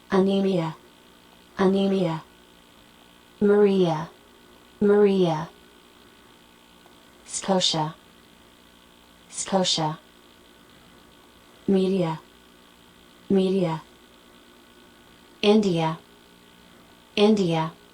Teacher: Las palabras que terminan en IA. En el inglés, generalmente la IA sonará como el sonido schwa del idioma inglés.